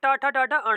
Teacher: जो टा वर्ग है इसे बोला जाता है मूर्धन्य व्यंजन